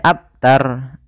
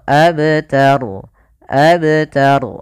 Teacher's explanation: pada Fal abtaru di sini ada Qalqalah pada lafal ba Qalqalah Apa itu Qalqalah artinya memantul huruf ba itu huruf termasuk huruf Qalqalah